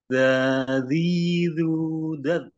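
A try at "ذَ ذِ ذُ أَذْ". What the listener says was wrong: baznya dialirkan Mas. Zazizu baz. Baz ngalir.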